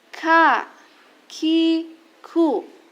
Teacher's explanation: huruf Kaf keluar dari pangkal lidah menyentuh pada bagian daging dan tulang atau bagian yang keras dan langit-langit secara bersamaan